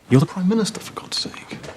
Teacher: Dropping the R is a universally southern thing, but that actually happens across classes.